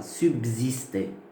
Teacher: Donc, avant assimilation, nous avons S-U-B-S-I-S-T-E. Mais après assimilation, le S qui est à côté du B devient Z. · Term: assimilation partielle